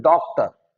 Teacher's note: डॉक्टर मतलब ओ तो आ रहा है लेकिन उस तरह से नहीं आ रहा जैसे ओ आता है। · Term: आगत स्वर